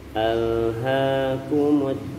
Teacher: lam sukun kita tempelkan di makhrojnya ujung lidah nempel ke gusi atas atau langit-langit paling depan jangan dilepaskan